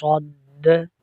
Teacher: دال میں کلکلہ کریں گے، صاد کو موٹا کر کے پڑھیں گے